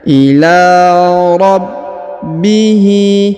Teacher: Huruf ba berharokat tasdid, maka kita tahan dan kita tekan ya.